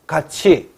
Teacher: 이건 구개음화가 일어나는 거죠. 티읕과 이가 만나서.